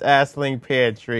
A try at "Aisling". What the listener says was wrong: Aisling. No, G. The G is silent. And it's pronounced Aisling Peartree. Peartree.